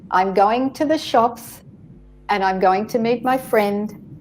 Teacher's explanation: Take a pause, because in English we phrase, I'm going to the shops and I'm going to meet my friend and I'm going to have a coffee. 3 different ideas, which I paused and I made a pause in between them. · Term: phrasing